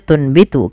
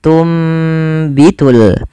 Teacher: Apa yang dibalikkan pada dasarnya tunbitu, karena ada huruf ba, maka suara nunnya dirubah dan diganti, dibalikkan menjadi suara huruf mim. Maka awalnya tunbitu dan ditandai di sini dengan mim kecil agar mim kecilnya mengganti posisi nun. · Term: iklab